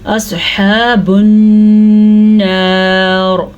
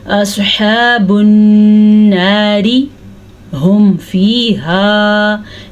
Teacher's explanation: रॉ को हम पुर पढ़ेंगे क्योंकि हमने वक्फ कर लिया, वक्फ करने की वजह से रॉ को साकिन कर दिया।